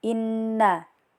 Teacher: Lanjut, pada ayat ke-5 di sini juga terdapat hukum gunnah karena ada nun bertasjid jadi baca dengung dan ditekan juga 3 harkat